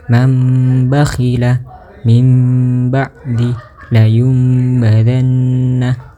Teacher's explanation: Hukum bacaan apabila nun sukun atau tanwin bertemu huruf ba, maka cara membaca hukum iqlab ialah merubah bunyi nun sukun atau tanwin menjadi huruf mim dengan merapatkan bibir dan didengungkan.